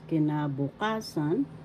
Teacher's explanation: The fourth syllable has the accent, so you pronounce this or bigkas, kinabukasan